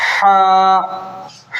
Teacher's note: हा जो हलक का बीच वाला हिस्सा होता है ना, वहाँ से निकलता है हा